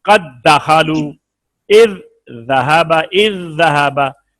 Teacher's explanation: دو حرف ایک جیسے، دو حرف ایک مخرج کے، یا دو حرف قریب المخرج اس طرح جمع ہوں کہ پہلا ساکن ہو دوسرا متحرک ہو، تو پہلے کو دوسرے میں ملا کر ایک حرف مشدد کی طرح پڑھیں گے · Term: ادغام